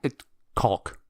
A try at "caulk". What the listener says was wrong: You're over accenting the L because it makes you uncomfortable to pronounce it properly. Yeah, you're really stretching out that L. a silent That's how it's pronounced. It's pronounced different in England, but the American version is caulk.